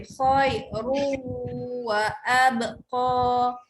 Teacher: Kalau baca khairun wa abqa, bunyi dia akan tersekat, dia tak lancar sebenarnya. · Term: idgham bi khunnah